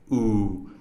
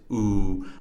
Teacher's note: a pure vowel sound whose articulation of both the beginning and end is relatively fixed it does not Glide to a new position of articulation